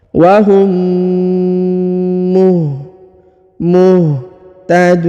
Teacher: Ajrau wahum, wahum, huruf mim bertemu dengan mim bertasdid, maka ditahan dan ditekan, didengungkan 2 harokat.